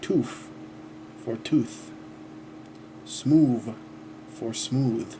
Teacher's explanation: Use of F and V for final TH.